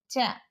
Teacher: చ శ్వాసం అల్పప్రాణం తాలవ్యం స్పర్శోష్మం